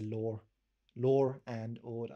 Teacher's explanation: we add an r before a vowel like between two vowels